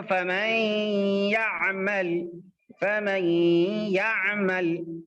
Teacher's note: ایک نون ساکن کے بعد یا ہے فَمَن يَعْمَلْ، فَمَن يَعْمَلْ، تو نون ساکن ہے اس کے بعد یا ہے، تو یہاں پر فَمَن، یہ تو نون کی آواز ہو گئی، تھوڑی سی ناک میں لے کے گئے نون کی آواز کو اور ساتھ ہی اس کو فوری یا سے ملا دیے. تو فَمَن يَعْمَلْ، فَمَن يَعْمَلْ، یعمل نہیں پڑھنا، یعمل، یہ ہو گیا. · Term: ادغام بالغنہ